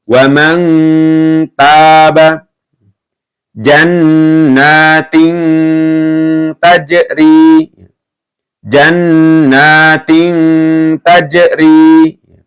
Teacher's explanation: Wa man taba, ditahan ya dan mendengung.